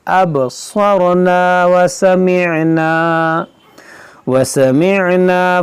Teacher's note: अब में क़लक़ला होगा और स्वाद को मोटा पढ़ेंगे, रा को मोटा पढ़ेंगे